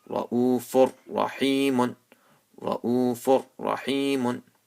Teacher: See, after tanween, there is a ra. So you join the letters, but you do not make any ghunna. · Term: idgham